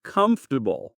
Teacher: We don't really pronounce the R strongly in comfortable. · It's like a bit of a lazy R sound, isn't it? It just kind of drops out. It totally drops out.